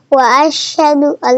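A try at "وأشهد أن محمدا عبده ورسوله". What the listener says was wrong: نہیں، واشہد ان، اللہ نہیں، واشہد ان، نون ہے.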